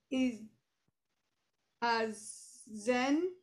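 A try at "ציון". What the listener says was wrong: that's a tsadi, it's not an ayin. So it's zion.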